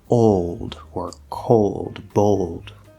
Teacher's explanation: the l isn't the last sound in the word but it's not the start of a syllable and so it's going to be a half l vowel sound not old old so i don't bring my tongue up and